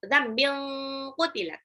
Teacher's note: Dzambil, tanwin ketemu qaf itu ikhfa. Ikhfanya hakiki. Jadi tanwinnya itu jadi kayak ang banget.